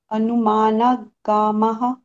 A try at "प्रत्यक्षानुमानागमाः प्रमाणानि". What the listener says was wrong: वहां पर फिर से आप गलत कर रहे हैं, क्यों? क्योंकि आप ना भी बोल रहे हैं और आगम भी बोल रहे हैं तो वहां पर ये गलत हो जाएगा। प्रत्यक्षा नुमाना गमाह